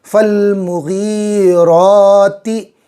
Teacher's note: را پر کھڑا زبر کھینچیں گے اور پر بھی کریں گے ، فل مغیراتی، غین بھی پر حروف میں سے، 7 حروف